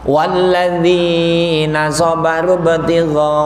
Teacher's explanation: Sobaru ibtigha'a ada 5 harokat Bu. Panjang. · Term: mat wajib muttasil